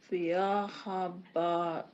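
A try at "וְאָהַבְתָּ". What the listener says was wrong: You added it. It's a vet, so ahav ta, yeah,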